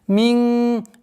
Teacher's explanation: ихфа, в размере двух огласовок, назализации, мягкой назализации